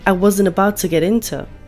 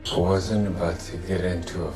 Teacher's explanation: The word to is reduced to a schwa and becomes t.